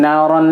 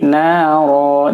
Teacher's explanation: Cara baca mad iwad jangan naron lagi, tapi naro dibaca panjang. Panjangnya pun hanya satu alif atau dua harokat. Jadi tidak boleh dibaca lebih dari dua harokat.